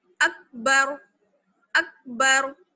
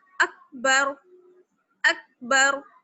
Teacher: را کو موٹا پڑھیں گے کیونکہ را سے پہلے کیا ہے زبر. را ساکن ہے اور را سے پہلے کیا ہے زبر, اس لیے را کو موٹا پڑھا جائے گا.